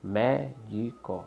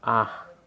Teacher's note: Médico, sílaba tônica, mé, a antepenúltima. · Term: proparoxítona